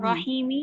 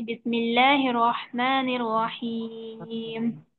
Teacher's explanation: यहाँ पर भी अगर हम वक्फ कर रहे हैं तो मीम के जी नीचे जो जेर है वो खत्म हो जाएगा, मीम मीम पर जजम देकर सांस तोड़ देंगे